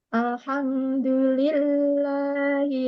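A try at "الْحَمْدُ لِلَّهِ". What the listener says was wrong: Ditarik lagi karena ada tawasudnya. Jangan buru-buru. Alham. Ah, itu masih buru-buru. Itu sidahnya nih. Dapatnya ke sidah tadi. Alhamdulillah. Dikasih tempo alnya karena di situ ada tawasud. Jadi sedikit aliran yang kecil ya, bukan yang rokhawah ataupun bukan sidah.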